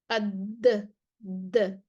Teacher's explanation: ऊपर वाले दांत भी लग रहे हैं, जुबान का नोक भी लग रही है